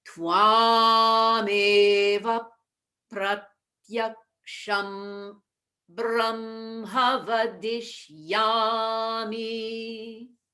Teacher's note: Now we have a long ah in twam.